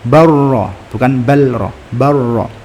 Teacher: Barrafa'a langsung masuk secara sempurna, lamnya masuk ke ro secara sempurna sehingga benar-benar enggak terdengar. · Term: idgham mutaqaribain